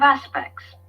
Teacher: you see that the T is not pronounced